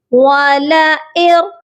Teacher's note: واو زبر وا، لام زبر لا، والا، حمزہ را زیر ار، والا ار۔ ہم نے یہاں پر حمزہ کو را مشدد کے ساتھ ملانا ہے اور نون ساکن کو چھوڑ دینا ہے۔ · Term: ادغام